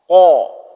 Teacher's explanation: Di pangkal lidah itu keluar huruf qaf. Qa, ya, huruf tebal.